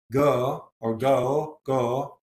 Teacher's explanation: Yorkshire has a simple single vowel, a pure vowel